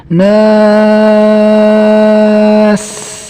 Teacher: Kemudian di sini ada huruf sin yang sifatnya rikhwah, maka dialirkan, dijalankan suaranya ketika dia diwakafkan atau dibaca sukun